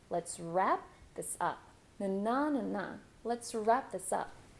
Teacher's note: notice how I'm stressing wrap